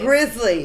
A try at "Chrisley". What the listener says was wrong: It's not the Grizzlies. It's not a G. thought when they said it, it's Chris Lee.